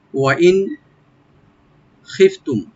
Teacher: নুন সাকিন এখানে এজাহার করব আমরা, yani স্পষ্ট করে পড়বো, এখানে কোনো গুন্না বা ইখফা হবে না